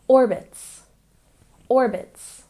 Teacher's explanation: And orbits, we stress the first syllable.